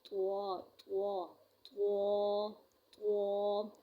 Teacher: ہم الف کو بھی ساتھ ہی موٹا کریں گے۔ بعض اوقات ہم پڑھتے ہیں طوا، یہ حروف غلط ہے، ہم الف کو ادا نہیں کرتے موٹے حروف میں سے، ٹھیک ہے۔